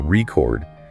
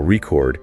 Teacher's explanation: if you stress the first syllable record it's a noun like a vinyl record right but if you stress the second syllable record it becomes a verb like recording a video same word two completely different meanings just